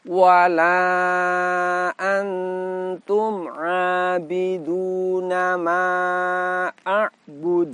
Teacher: bagian akhir kita dapati Qalqalah disini qalqalahnya Kubro apa sebab karena bunyi qalqalahnya berhenti sehingga bunyi pantulannya ini terdengar lebih kuat daripada Qolqolah Sugro · nun sukun dibaca dengan cara disamarkan dan didengungkan kemudian pada bagian akhir kita dapati Qalqalah disini qalqalahnya Kubro apa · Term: Ikhfa Haqiqi